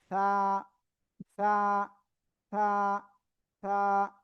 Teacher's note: সামনের দিকে ফু দেন, ফু দেন, এরকম না, মানে এক কথায় জিহ্বার আগা আর উপরে 2 দাঁতের আগা এর মাঝখান দিয়ে বাতাস বের করেন। বের করে জাস্ট এক আলিফটা নিয়ে এই অক্ষরটা উচ্চারণ করতে হবে।